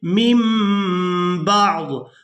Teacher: नून की आवाज़ को मीम के साथ बदल कर अदा किया जाएगा। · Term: इक़लाब